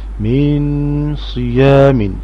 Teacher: صاد حروف حلقی نہیں ہے، اس لیے نون ساکن کی آواز ناک میں سے آئے گی